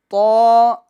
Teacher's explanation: اب دیکھیں تو کے اندر کھڑی حرکات ہے، لہٰذا ہم اس کو ایک الف کی مقدار کھینچیں گے